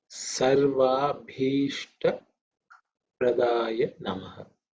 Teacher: this bha is the fourth letter in the pa varga, so it's aspirated, extra air